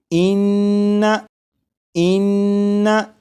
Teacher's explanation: नून मुशद्दद की अदायगी के वक्त ज़बान तालू से लगेगी